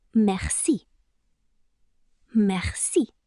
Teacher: You're really emphasizing the second syllable.